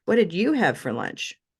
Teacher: then we can play with where we change the tone and move the stress to you